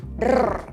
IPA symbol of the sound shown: r